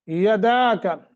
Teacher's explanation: دال کے آگے الف ہے، 1 سیکنڈ کی مد کریں گے۔